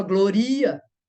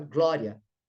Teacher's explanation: Quase que o I não é pronunciado. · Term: semivogal